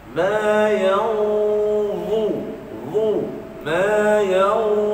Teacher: Huruf dha, tuan-tuan, semasa sebut dha, lidah kena keluar.